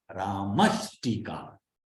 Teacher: the Visarga will change to the sibilant of the cerebral. It will change to Sha.